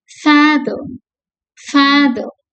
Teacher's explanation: இது ஃபாதர், R is silent